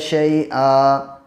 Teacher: جب وقف میں 2 زبر ہوتے ہیں، جب آیت کرتے ہیں تو یہاں پہ ایک زبر کو گرا کے ایک زبر کے ساتھ الف پڑھتے ہیں